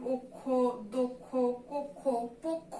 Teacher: তারপরে দেওয়া আছে কক্ষ, এটার উচ্চারণ কক্ষ হবে না, এটার উচ্চারণ হয়ে যাবে কি, কক্ষ। তাহলে কি, যেহেতু স্বরেয়র পরে যুক্ত খ আছে, এই যুক্ত খ থাকার কারণে স্বরেয় ধ্বনির উচ্চারণটা কিসের মতো হয়ে যাবে, ও এর মতো হয়ে যাবে